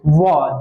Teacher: यानी दांत और ओठ दोनों से बोला जाता है। देखिए व दांत और ओठ दोनों का उच्चारण होता है, उसी को कहते हैं दंष्ठोष्ठ्य वर्ण।